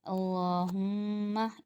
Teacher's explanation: میم پہ میم مشدد ہے تو یہاں پر غنہ ہوگا تھوڑا سا۔ اللہم ایک الف کی مقدار، یعنی ایک انگلی کھلی اور بند کی۔